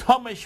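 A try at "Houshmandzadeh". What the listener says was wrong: Okay, I think the H is silent there, but that's okay.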